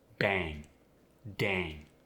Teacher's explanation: you get the long a when it precedes the NG